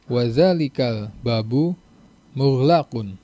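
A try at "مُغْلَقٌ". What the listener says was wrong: Mughlaqun pendek semua.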